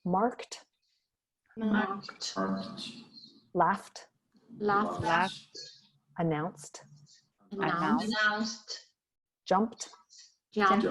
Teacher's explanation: If you don't have T or D in the end of the verb in its infinitive form, and we have some whisper sound in the end, like k, f, c, p, so we pronounce T, like marked, laughed, announced